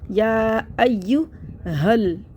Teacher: دونوں کو الف کو چھوڑ دیں گے تو اس کو ہا کو لام سے ملا دیں گے